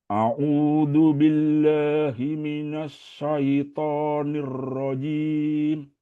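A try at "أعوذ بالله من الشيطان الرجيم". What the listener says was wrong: Oke, pelan-pelan, temponya sedikit dilambatkan. A'udzu billahi minasyaitonir rajim.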